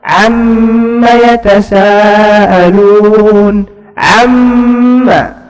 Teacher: mim bertasdid, gunnah 2 harakat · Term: mim al-musyaddadah